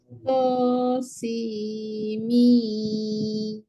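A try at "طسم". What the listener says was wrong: Tak cukup. Sin kena 6. To 2. To 2, sin 2, 6, mim 6. To, sin, mim.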